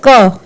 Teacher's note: क तो क का जो उच्चारण स्थान है वो कंठ है हमारे कंठ से क की आवाज निकल रही है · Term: कंठ वर्ण